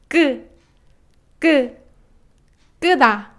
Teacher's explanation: It's just more high pitch and with more tension on your throat.